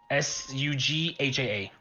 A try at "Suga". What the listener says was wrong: Suga. The first H is silent.